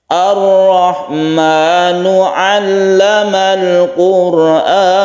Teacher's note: Quran, ro bersukun, sebelumnya ada dhamma disebut ro tafkhim atau tebal.